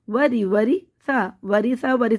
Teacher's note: را کے نیچے زیر ہوگا تو باریک پڑھیں گے